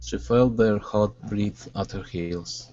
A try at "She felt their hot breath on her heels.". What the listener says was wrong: Okay, instead of breathe, it's breath. She felt their hot breath at her heels.